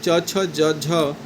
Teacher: च छ ज झ इन चारों का उच्चारण तालव्य यानी तालु से किया जाता है।